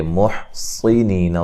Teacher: صاد کو موٹا ادا کریں گے، حا کو واضح نکالیں گے، نیہ مدہ ہے۔